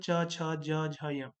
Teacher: च वर्ग के अंदर च छ ज झ य का उच्चारण स्थल तालु होता है इसलिए इसे तालव्य ध्वनिया कहते हैं।